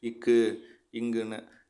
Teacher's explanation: மெய் எழுத்துக்களை அரை மாத்திரை அளவுல ரொம்ப சீக்கிரமா சொல்லிருவோம்.